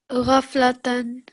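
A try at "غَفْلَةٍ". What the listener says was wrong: So not tan. And could you please read it as if you're making a pause there?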